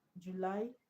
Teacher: So July the stress is on lie not June.